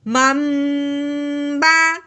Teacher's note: میم ساکن کے بعد اگر با آ جائے تو میم ساکن پہ غنہ کرتے ہیں